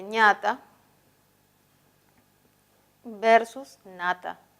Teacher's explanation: La nasal palatal es ña, ¿no? Se representa con la letra ñ. Y la nasal alveolar es na